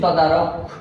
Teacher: ক এর পরে কোনো রকম স্বরধ্বনির উচ্চারণ নেই, এই কারণে এই যে হসন্তটা এটা অবশ্যই দিতে হবে।